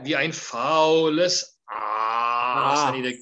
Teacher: I need a glottal stop and a huge dark Aas.